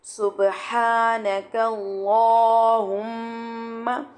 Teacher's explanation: تو جلالہ کریں گے، لیکن جلالہ کرتے ہوئے اس بات کا خاص خیال رکھنا ہے کہ کاف کی حرکت جو ہے وہ آواز ساؤنڈ جو ہے وہ موٹا نہ ہو